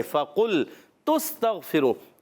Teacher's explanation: قاف ادا ہوتے ہیں زبان کی جڑ تالو کے نرم حصے سے